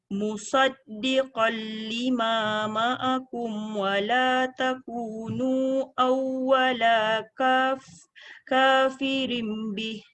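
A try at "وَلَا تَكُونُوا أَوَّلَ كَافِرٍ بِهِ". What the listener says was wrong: Wala takunu tu panjang. Mesti lebih daripada 2 harakat. Iaitu 4 paling panjang. Lepas tu awwala tu tak boleh panjang. Kemudian yang ketiga kafirim bih.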